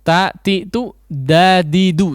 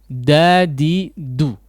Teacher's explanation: ujung lidah yang dipertemukan dengan antara gusi gigi seri atas ya dengan Gigi serinya atau Pangkal gigi seri atasnya tatitu dadidu sama di situ jangan ujung lidahnya terlalu belakang disentuhkan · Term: huruf Dal